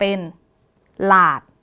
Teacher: ส่วนพยางค์ที่2เนี่ยจะอ่านออกเสียงเหมือนมีหอนำนะคะ จากลลิงลอาดลาดหอนำเป็นหลาดคำนี้ก็จะ